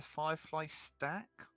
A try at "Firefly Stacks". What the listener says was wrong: Firefly stacks, plural.